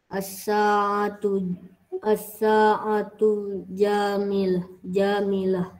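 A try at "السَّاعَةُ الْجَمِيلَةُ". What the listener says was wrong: Pakai alif lam. As-sa'atul jamilah.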